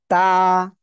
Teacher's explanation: জিহ্বার আগা সামনের উপরে দুই দাঁতের গোড়ায় লাগাবেন লাগিয়ে আপনি উচ্চারণ করবেন তা কয় আলিফ টান হবে এক আলিফ